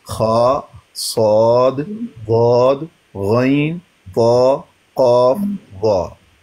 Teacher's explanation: हुरूफ तफहीम वो हुरूफ जिनको हमेशा मोटा और पुर पढ़ेंगे वो 7 हैं।